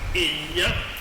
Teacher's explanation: It's the same thing you have in the word inya, ny representing the y, and then you have the letter A, which is nasalized because it is following a nasal consonant